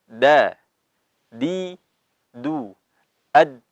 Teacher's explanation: Ad, ujung lidah bertemu dengan al-thanaya al-ulya atau pangkal gigi seri yang atas ya. Jadi langsung ad, jangan diayun. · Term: huruf dal